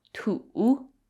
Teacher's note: notice how there's a dip in the middle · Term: 3rd tone